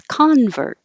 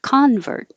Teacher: if the stress is on the first syllable it's convert so it's a person who changes their belief